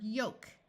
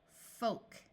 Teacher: the O will also be long but also the L will be silent